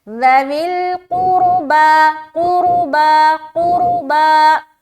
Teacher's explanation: پیش ہے. قاف بھی موٹا ہوگا کیونکہ یہ حروف مستعلیہ میں سے ایک ہے, اور را موٹا ہوگا اس لیے کیونکہ یہ رائے ساکینہ سے پہلے پیش ہے.